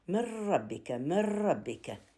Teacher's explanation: لكن النون ويا الراء من ربك يحصل بها إدغام كامل